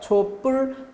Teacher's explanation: 그래서 오른쪽에 촛불 보니까 초는 받침 없이 모음으로 끝났죠. 100% 유성음인 모음. 그리고 뒤에 예사소리가 촛불, 된소리로 발음이 되죠.